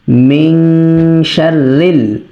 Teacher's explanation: শিন হচ্ছে ইখফার 15 টি হরফের মধ্যে একটি হরফ তো সেজন্য আমরা যখন রিডিং তেলাওয়াত করব তখন আমরা অবশ্যই নুন সাকিনে এখানে ইখফা গণ্য করব